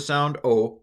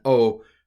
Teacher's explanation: the distinction would have been between a shorter shorter duration of the sound o for Omicron and o a longer duration for Omega